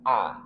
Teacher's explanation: Hamzah dari pangkal tenggorokan. A dia termasuk huruf yang jahr. Jadi tidak keluar nafas. A yang keluar adalah suara.